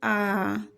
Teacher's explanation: जिन स्वरों के उच्चारण में मुख सबसे बड़ा खुलता है उन्हें विवृत्त स्वर कहते हैं। जैसे आ, जब हम आ का उच्चारण करते हैं तो हमारा मुख पूरा खुल जाता है, इसलिए यह विवृत्त स्वर का उदाहरण है।